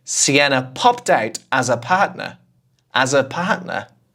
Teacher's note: I never say 'as her' in normal conversation. I'm more likely to say, /æzə/.